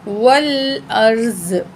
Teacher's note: तो वक़फ़ करेंगे हम, किस तरह करेंगे? ज़्वाद की ज़ेर को ड्रॉप कर देंगे, ज़्वाद पे जज़म पढ़ेंगे